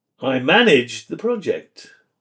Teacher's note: The emphasis on the verb focus on your action and ownership